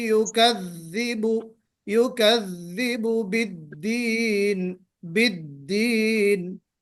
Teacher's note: जुबान के किनारे को हम दांतों के सिरे में लगाएंगे, तरफुल लिसान को यहाँ दांतों के सिरे में लगाएंगे, तो ये मखरज सही निकलेगा दाल का, और फिर मखरज को सही अदा करते हुए हमें जहर और शिद्दत भी उसमें लाना है।